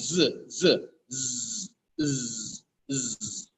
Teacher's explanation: we can feel a vibration in your vocal cords it is voiced sound if you don't feel a vibration in your vocal cord you